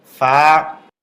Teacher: উপরের দাঁতের আঘাত নিচের ঠোঁটের পেটে লাগবে